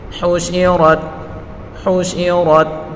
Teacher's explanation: وَإِذَا الْوُحُوشُ، وَإِذَا الْوُحُوشُ حُشِرَتْ، ہا کے اوپر پڑھی حرکتیں بغیر کھینچے پڑھیں گے، شین کے نیچے بھی پڑھی حرکتیں اور را کے اوپر بھی پڑھی حرکتیں بغیر کھینچے پڑھیں گے، اور را کو پر پڑھیں گے، را کو تا کے ساتھ ملا کر پڑھیں گے